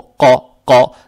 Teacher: Теперь здесь буква «ков» с фатхой. Фатха приобретает оттенок «о», «ко», «ко».